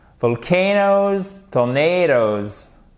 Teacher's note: à chaque fois, vous avez l'accent tonique sur la deuxième syllabe